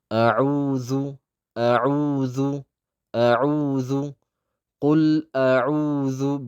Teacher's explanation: በላይና በታች ባሉ የፊት ለፊት ጥርሶች መካከል ምላሳችንን ትንሽ ያውጥተን ከምንቀራቸው ፊደላት ውስጥ ናት። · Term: ሕሩፍ ለሰውያ